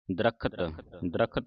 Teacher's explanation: ਸੰਗਤ ਜੀ ਦਦਾ ਜਿਹੜਾ ਸਬੰਧ ਦੰਦਕ ਬੋਲਣਾ